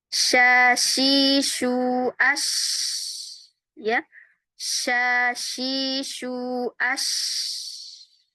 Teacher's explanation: Menyebarnya huruf suara huruf syin dari pusat makhraj. Jadi dari tengah lidah menyebar membentur gigi-gigi atas dan bawah. · suara desis itu ya itulah yang disebut tafasyi ya. Menyebarnya huruf suara huruf syin dari pusat makhraj.